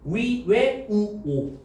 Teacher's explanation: 원순 입술을 둥글게 오므려 발음합니다